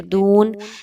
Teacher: اعبد ما تعبدون، عین کو پڑھتے ہوئے، اور پھر دون، دال پیشوا دو، واو مدہ 1 سے 2 الف کے برابر واو مدہ کی حرکت کو رکھیں گے۔